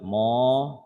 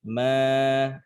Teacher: ma-nya itu jangan dibaca tebal, bukan mo, tapi tipis. Ma, ya, bukan tebal mo, tapi ma, gitu.